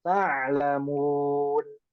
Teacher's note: ketika kita membaca kata ta'lamun, maka wawunya ini tidak boleh masuk ke hidung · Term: wawu madiyah